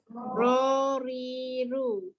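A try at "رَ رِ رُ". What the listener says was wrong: Dia tak cukup. Dia kena naik ke le langit.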